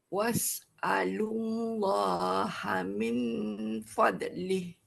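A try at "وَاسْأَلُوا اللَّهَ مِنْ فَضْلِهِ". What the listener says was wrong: Ha fad tu dah jadi qalqalah. Jangan qalqalahkan fadli.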